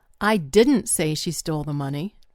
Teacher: Putting the stress on the word didn't means that I personally never said that.